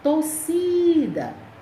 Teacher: Torcida, a sílaba tônica é si, a penúltima. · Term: paroxítona